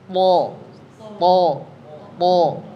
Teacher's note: Karena huruf to itu huruf tebal, maka mesti liquwatin i'timad ala makhrajihi. Dia mesti kuat ditekan dulu ke makhrajnya, ujung lidah ke usul. Tekan dia, baru bunyikan.